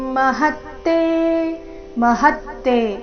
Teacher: ಮಹತ್ತೆ ಹ ಮೇಲೆ ನೈಸರ್ಗಿಕವಾಗಿ ಆಘಾತ